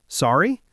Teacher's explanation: I think the most common thing people say is just sorry with a rising intonation like sorry.